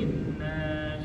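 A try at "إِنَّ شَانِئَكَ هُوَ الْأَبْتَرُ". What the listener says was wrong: Dikit lagi. Inna syani'aka huwal abtar. Dia didengungin aja tapi nggak dipanjangin. Inna syani'aka. Jadi PR-nya nun tasdid sama fasalli ya.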